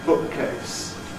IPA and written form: ˈbʊʔkeɪs (bookcase)